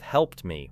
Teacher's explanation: Use the same process with helped me, where the lips release the final T-like sound before closing again for M